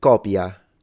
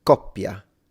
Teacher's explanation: from a linguistic perspective, it's like there is a little pause, and I wonder if it would be considered a glottal stop. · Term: double consonant